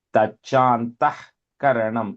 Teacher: See, and tachantaha, visarga is there, right? But because ka is coming later, the joining sound is a H